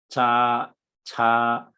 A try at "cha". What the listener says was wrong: Ya, ca he cha, lidahnya coba diangkat ya. Yang CHA, Bapak latihan bareng-bareng saya, jadi nempel dulu baru kita baca ya. Jadi lidah angkat, ya, terus baru kita baca ya. Cha, Kalau CA, ya, ca, lidahnya datar saja ya.